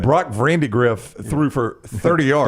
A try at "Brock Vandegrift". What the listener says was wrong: Don't make it sound like Candy Griff. Vandegrift You said Vandy Griff.